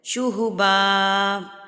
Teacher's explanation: دو زبر پہ جب آپ وقف کرتے ہیں تو یہ ایک الف پڑھا جاتا ہے، ایک الف پڑھا جاتا ہے.